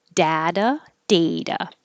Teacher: the first part can be dad or day either one is fine people use them both · the t has to sound like a d and the a at the end sounds like an uh but the first part can be dad or day either one